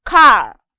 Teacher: have the word ka the british will call it ka but the americans will pronounce the r and call it car